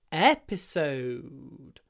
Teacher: The stress is on the first syllable in this word, episode.